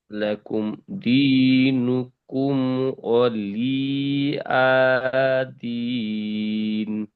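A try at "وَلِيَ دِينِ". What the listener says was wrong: এখানে অলি, লি আপনি টান করে ফেলেছেন। অলি টান হবে না। ওয়ালিয়া, ওয়ালিয়া ও যাবার ও লাম জেল্লি, ওয়ালিয়া যাবার ইয়া, ওয়ালিয়া। ওয়ালিয়া, ওয়ালিয়া। না, লাম ইয়াজের নেই। এখানে লাম জের লি, ইয়া যাবার ইয়া।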